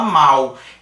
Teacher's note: um fonema de l no final a gente fala mal Então apesar de ser a letra L O fonema é de U · Então, apesar de ser a letra L, o fonema é de U. Então, aqui a gente tem também um ditongo. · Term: ditongo oral